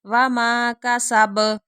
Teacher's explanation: اب دیکھیں باپ پہ بھی قلقلہ ہو رہا ہے کیونکہ اس کے اوپر ہم وقف کر رہے ہیں